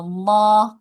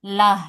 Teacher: kalau tadi dibaca tebalnya loh, kalau dibaca tipisnya seperti huruf lam